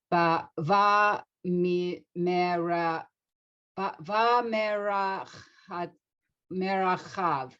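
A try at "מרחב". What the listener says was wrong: This shva here is not, we don't say, so just go by merchav.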